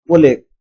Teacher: ক হচ্ছে অঘোষ অল্পপ্রাণ